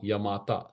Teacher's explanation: y is short, ma is long, ta is long. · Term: short long long, Yagana